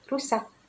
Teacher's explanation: Dan huruf R yaitu getaran alveolus